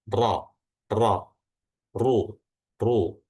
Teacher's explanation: ketika ro itu berharokat fathah atau dhammah, maka belakang lidahnya itu ditebalkan sehingga rongga mulutnya itu menyempit dan menghasilkan suara ro, ro, ru, ru. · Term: ro tebal